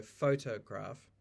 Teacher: called stress you also have in a word like photograph here we've got two syllables that are stressed we've got the big stress the primary stress is Foe and then we've got a secondary stress on graph